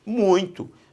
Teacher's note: A força tônica está no U é a vogal, o I é a semivogal, o ditongo aqui também é decrescente.